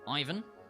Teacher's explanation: in English we say Ivan putting the stress on the first syllable